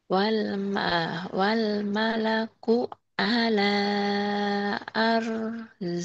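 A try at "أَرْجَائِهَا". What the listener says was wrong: Bagus tinggal jimnya dikerasin. Wal malaku ala wal malaku ala arjaiha.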